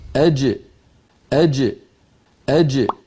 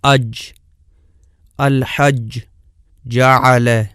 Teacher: زبان کا درمیانی حصہ اور اوپر تالو کے درمیان سے جیم ادا ہوتی ہے، اور ملاحظہ فرمائیں کہ اس کا مخرج بالکل بند ہو جاتا ہے۔ اج، الحج، جعل۔